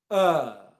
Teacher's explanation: it comes from the middle of your mouth and it's long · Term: er sound